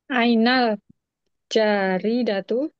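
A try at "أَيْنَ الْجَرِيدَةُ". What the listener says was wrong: Jimnya jangan panjang. Ainal jari datu gitu.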